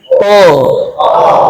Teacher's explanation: To punya sifat nih supaya agak tebal, lidah belakang naik. To. Maka kalau hanya to, itu lidahnya turun tuh.